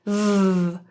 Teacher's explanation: The final V that consonant in IV is again typically voiced IV with the bottom lip and top teeth vibrating with your vocal folds